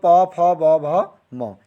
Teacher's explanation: वर्णों का उच्चारण बिंदु आपका ओष्ठ से है, यानी कि होठों से।